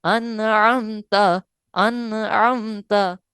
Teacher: आइन जो है वो हरूफ हलकिया में से है, लिहाजा इस वजह से यहाँ पर गुन्ना नहीं किया, यानी इस तरह नहीं पढ़ा, बल्कि पढ़ा है अनअमता, अनअमता। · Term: इजहार